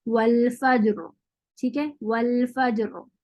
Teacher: اس پر جب ہم روم کے ساتھ وقف کریں گے تو پھر را کو باریک پڑھیں گے کیونکہ ہم زیر کی تو کچھ پارٹ کو پڑھ رہے ہیں. لیکن جب ہم اس پہ وقف کریں گے ساکن کرتے ہوئے تو پھر ہم را ساکن ما قبل فتحہ کے رول کو فالو کرتے ہوئے را کو پھر موٹا پڑھیں گے